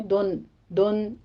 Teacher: آپ نے دن دن یا ظاہر کرنی ہے نون ساکن کی آواز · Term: اظہار مطلق